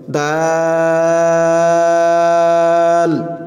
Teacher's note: এই দাল বলার সময়ও অনেক টান দিতে হবে, 4 আলিফ পরিমাণ টান দিতে হবে।